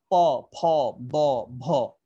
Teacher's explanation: এই প বর্গের গুলা ঠোঁট থেকে উচ্চারিত হয়